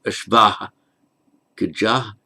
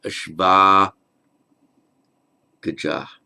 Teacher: the ashvah becomes ashva before the following voiced consonant. So it's not ashvah gajah, it's ashva gajah.